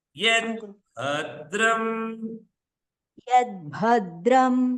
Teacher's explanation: ಇಲ್ಲಿ ಭಾ ಎರಡು ತರ ನೀವು ಗಮನಿಸ್ಬೇಕಾಗಿದೆ. ಭಾ ಮಹಾಪ್ರಾಣ ಅದು ಮೊದಲನೇದು, ಎರಡನೇದು ಅನುದಾತ್ತ ಇದೆ